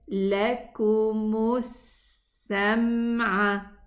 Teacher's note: We have a dhamma meme, and then I go immediately to the sin shadda. The lam is also dropped because it has a sukoon letter after it, and I go from the meme dhamma to the sin shadda. · the sound of the sin runs with a whistling sound. It has rakhawa and it has safir. Safir means whistle.